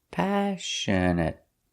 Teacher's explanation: The stress is on the first syllable